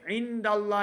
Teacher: نون ساکن کے بعد آگے دال حروف اخفا سے ہے تو اخفا کریں گے